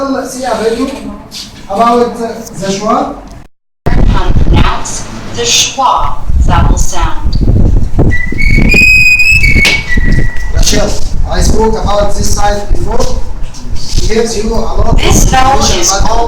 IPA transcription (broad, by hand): ə